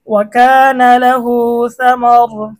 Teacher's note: সা মা র দুই পেশ রুন সা ম ওয়াকফ করার কারণে রয়ে সাকিন হবে এবং রটা মোটা হবে